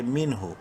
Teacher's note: نون ساکن کے بعد ہا حروف حلقی میں سے ہے، اظہار کریں گے اس نون میں یعنی ظاہر کر کے پڑھیں گے